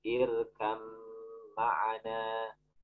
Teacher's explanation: Yang pertama ba ketemu mim, ba ma satu makhraj di bibir, satukan bir, ba ma satu makhraj tapi beda sifat, sebagian sifatnya beda. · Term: idgham